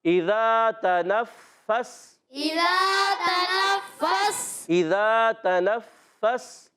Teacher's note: तनफ़्फ़स में ता की अदायगी क्लियर करेंगे। नून को फ़ा से मिलाना है। फ़ा ज़रा रुक कर अदा करेंगे, फिर सीन को साकिन करेंगे।